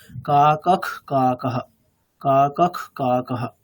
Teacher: ওই বিসর্গের প্রোনাউন্সিয়েশন কেমন হবে, অর্ধেক খকারের মতো, মানে কা কখ কা কাহা, কা কখ কা কাহা।